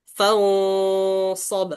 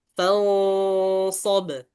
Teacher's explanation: Fa fa harus jelas faidza faragta fans fans ingat bahwa di ikhfa ikhfa harus didengungkan dan juga kita cari huruf selanjutnya apa shad. Karena shad dia tebal, harus kita dari ikhfa itu kita tebalkan juga fans karena dia selanjutnya shad fansob.